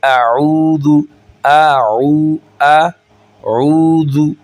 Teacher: اب یہاں پر ہم پڑھیں گے اعوذ، اعوذ، یہ دیکھیں حمزہ علیحدہ ہے، عین علیحدہ ہے، اب یہاں پہ او نہیں کریں گے، عین کو تھوڑا سا ہم کھینچیں گے، آگے واو ہے، واو مدہ ہے، ٹھیک ہے، واو ساکن ہے، واو کے اوپر جو سائلنٹ سائن ہے یہ جزم کا سائن ہوتا ہے، اس کو ساکن کہتے ہیں، جس حرف کے اوپر یہ سائن آ جائے وہ ساکن کہلاتا ہے۔